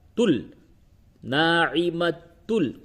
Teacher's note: لام اور را اس میں ادغام بلا غنہ ہوتا ہے۔ تو یہ لام کی مثال ہے، تل، ناعمت تل، غنہ نہیں ہوگا اس جگہ پہ۔